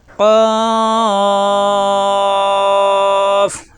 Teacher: জবর আসলে আকার প্রকাশ পাবে না, জিহ্বার গোড়া থেকে উচ্চারণ। কফ, চার আলিফ টানতে হবে। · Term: মোটা হরফ